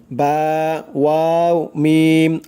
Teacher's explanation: তারপরে 15 নম্বর মাখরাজ, দুই ঠোঁটের মধ্যস্থল হইতে পড়া হয় তিনটি অক্ষর বা, ওয়াও, মিম